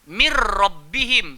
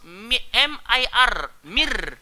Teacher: Bila nun bertemu dengan ra, seolah-olah nun tu tak ada, masuk dalam ra terus. · Idgham kamil ini nun tu hilang terus.